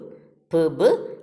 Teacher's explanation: Then soft palate is lowered in order to shut the nasal passage, air compressed, and then lower lip suddenly removed from the upper lip and the air escape through the mouth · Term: bilabial plosive